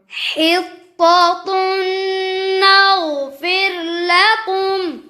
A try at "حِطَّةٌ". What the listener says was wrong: जी है तो पर आवाज क्या होगी हाँ हित्ता बारीक ना हो हित तो पढ़ो दोबारा حطة نغفر لكم